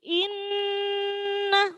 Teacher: di situ ada nun tasydid maka dibaca mendengung.